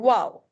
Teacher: واو، واو حروف شفوی میں سے ہے، ہون کی ناتمام گولائی سے ادا ہوتا ہے، ہمارے ہون بالکل ڈونٹ کی شکل کے او شیپ کے ہوتے ہیں اور اس کو بلکہ جلدی سے پڑھا جاتا ہے واو۔